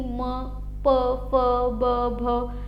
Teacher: ओठांचा वापर करून जसं की म प फ ब भ हे जे आहेत आपल्या ओष्ठ्य वर्ण असं त्यांना म्हटलं जातं